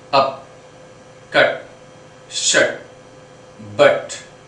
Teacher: It is between open and half open. It is bit stressed and it produces a hitting sound, as you can see up, cut, shut, but. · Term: central vowels